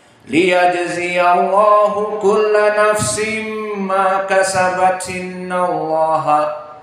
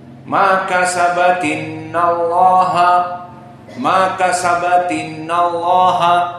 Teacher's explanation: Maka jika disambung pun tetap dia itu dibaca hamzahnya. Maka sabat innallaha dalam satu nafas, tidak ada perubahan.